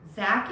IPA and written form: zæk (zack)